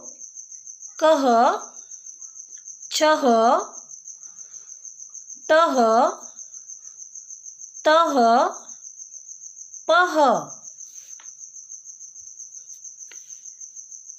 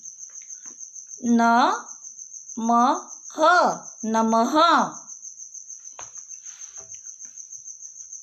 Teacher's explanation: अह की ध्वनि आधे ह के उच्चारण की तरह होती है। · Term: विसर्ग